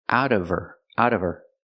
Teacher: the H and her is silent because it's not a stressed word